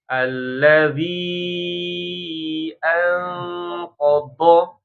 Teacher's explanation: Makrotnya sisi lidah menyentuh adros.